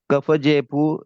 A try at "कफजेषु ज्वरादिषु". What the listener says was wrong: पुणे दिशु है, आप विभक्ति पढ़े ना, कफ जेशु ज्वरा दिशु। पू बोल रहे हैं, शु बोलिए आप, कफ जेशु।